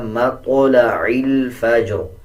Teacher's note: جب وقف کریں گے تب بھی را کو پر پڑھیں گے اور زیر کو سائلنٹ کر دیں گے